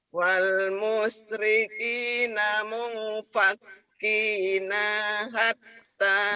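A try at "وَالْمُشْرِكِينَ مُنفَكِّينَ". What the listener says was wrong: Nanya pendek. Nanya pendek. Wal musyrikina munfakina hatta. Pendek. Iya diulang panjang pendeknya.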